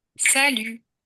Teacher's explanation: deux syllabes et la deuxième allongé pour marquer le fait que en français bah la dernière syllabe est plus longue